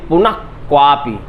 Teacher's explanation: का और खा के पहले यदि विसर्ग आता है तो उसका उच्चारण आधे विसर्ग के रूप में माना जाता है और उसे जिह्वा मूलीय कहा जाता है